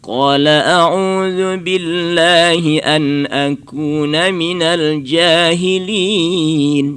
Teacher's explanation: jangan terlalu banyak huruf itu ke sengau, ke khaisumnya. Jangan banyak kali ke hidung ya. Huruf itu banyak nanti dijauh itu apa, rongga mulut.